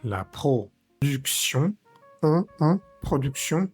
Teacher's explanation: es la on, que pronunciamos con la boca muy cerradita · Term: vocal nasal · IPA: [ɔ̃]